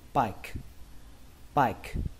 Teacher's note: Ở đây các bạn hãy xem như âm E nó không tồn tại mà nó kết thúc bằng âm K luôn